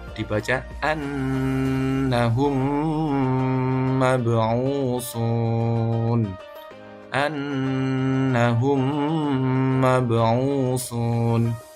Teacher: dileburkan dua mim itu, dibaca dengan sukunnya, kemudian ditahan 2 atau 3 harokat. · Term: idgham mislain